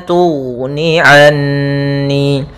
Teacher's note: Pada lafal ghain yang sukun tidak boleh memantul, tidak boleh tughni anni, tapi dia la tughni anni.